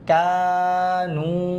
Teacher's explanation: কাফ আলিফ জবর কা, নুন ওয়াও পেশ নু, কানু। এটা হবে, দুইটাই কিন্তু টান। একটা হচ্ছে জবরের পর খালি আলিফ, আর একটা হচ্ছে পেশের পর যজমলা ওয়াও।